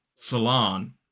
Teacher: And notice that in the first syllable, American pronunciation used the schwa, and in the second syllable, it's that long ah, salon. Whereas in British English, we use the ah vowel sound in the first syllable and the o, like in sock, in the second syllable.